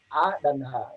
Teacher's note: A dan H atau Hamzah dan H besar itu tempatnya di tenggorokan bagian bawah